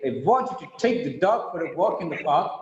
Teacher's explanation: Otherwise, we read it, I want you to take the dog for a walk in the park, it's monotonous. Here, want, take, dog, walk, park are stressed. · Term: rhythmic pattern